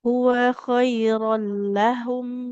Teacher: Wawnya fathah. Tidak ada alif di depannya. Nggak boleh kita panjangkan.